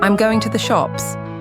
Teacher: For simple statements, the pitch generally [music] falls at the end. I'm going to the shops. The pitch drops on [music] shops. · The pitch drops on shops.